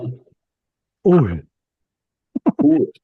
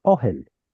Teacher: this is the U that in Hebrew dialect turns into an O vowel